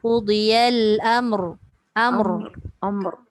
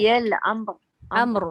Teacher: ra tu dia punya sifat getar ataupun disebut takrir, dia tak boleh hilang. Baik dia berbaris, baik dia mati, baik dia bersabdu, tetap ada getaran tu.